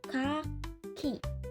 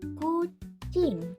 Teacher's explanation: Bagian belakang lidah menyentuh langit-langit lunak dan menahan udara. Lalu udara dilepaskan dengan cepat, menghasilkan letupan K. Setelah itu langsung diikuti bunyi vokal A. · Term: bunyi K